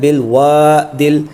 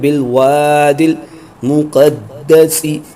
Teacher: دال کو لام کے ساتھ ملائیں گے، الف نہیں پڑھیں گے